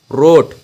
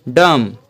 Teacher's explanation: बोलने से भी पता चलता है कि हम एक कंटिन्यूस साउंड में बोल रहे हैं या एक्सप्लोडेंट की तरह साउंड। तो रोट में हमें एक कंटिन्यूस साउंड मिल रहा है, तो ये हमारा हैवी साउंड। और डम में हमें एक शॉर्ट साउंड मिल रहा है, तो ये हमारा शॉर्ट वॉवेल।